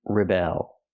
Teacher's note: And the verb is to rebel. Put the stress on the second syllable.